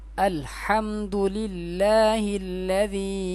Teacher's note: یہ دیکھیں یا کے اوپر مد ہے، اس ذال کو 3 الف کی مقدار یا 4 الف کی مقدار کھینچ کر پڑھیں گے